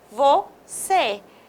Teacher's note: com acento circunflexo, nós temos o E fechado